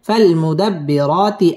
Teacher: একালিফ টেনে পড়তে হবে এবং র বারিক হবে